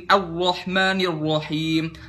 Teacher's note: Hasromatur ro'at yaitu meniadakan sifat takrir pada penyebutan huruf ro. Takrir itu getaran ya.